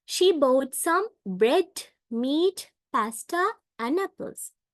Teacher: We rise our voice and use the falling intonation on the last item to indicate that the list has ended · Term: Rising falling ination